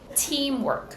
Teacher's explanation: teamwork first syllable is stressed